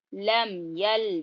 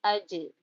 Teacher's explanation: جیم پر جزم آیا تو یہاں پہ قلقلہ ہو رہا